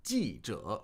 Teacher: 记 者, fourth tone, third tone.